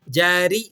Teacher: یہ را باریک ہوگی کیونکہ را کے نیچے حرکت ہے، تو را کے نیچے حرکات لگی ہوں تو آپ نے را کو باریک کر کے ادا کرنا ہوتا ہے۔